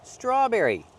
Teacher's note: We see the tr together making the ch- sound like train and truck together. Ch. Straw make the r sound with the voice.